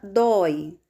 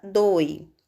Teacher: Na palavra dói, nós também temos o ditongo aberto, oi. Por essa razão, nós devemos colocar o acento agudo, oi.